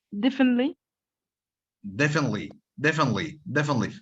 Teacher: So you do not pronounce the T.